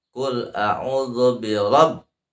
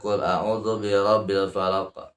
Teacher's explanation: ba-nya ada tasydid, maka harus ada ditahan ya. Itu ditekan sedikit.